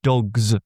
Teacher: even all those plurals like dogs where really it's a it's a voiced Z sound